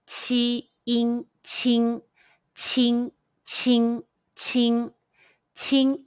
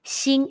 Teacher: it's like the e e n sound in the english word teen but shorter and with more spread lips